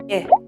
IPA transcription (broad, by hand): ɪ